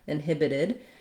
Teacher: When I change to inhibited, this stopped T changes to a flap T because it's now between two vowel sounds, and it sounds more like a D, inhibited. The stress is still the same with the main length and stress on the hib syllable, the second syllable